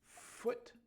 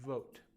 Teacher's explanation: It's the exact same thing you do with V, but the only difference is that your vocal cords are not vibrating or not buzzing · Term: F sound